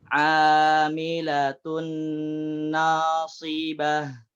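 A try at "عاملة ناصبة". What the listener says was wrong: Naknya tipiskan lagi.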